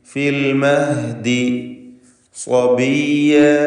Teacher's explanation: സ്വാദിന് മാത്രം തഫ്ഖീം കൊടുക്കുക.